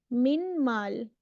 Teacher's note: the noon is completely gone the the noon has merged into the m m there is no noon you you only see the slight